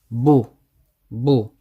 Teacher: we pronounce it one haruka and the lips they extend outwards they come out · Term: Dhamma